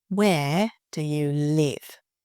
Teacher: Showing the stress on the where and the live.